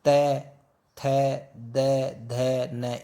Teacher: त, थ, द, ध, न इनको बोलते हैं तो हम हमारी जीभ किन की लगती है? दांतों की लगती है, तो ये दंत्य हो गई।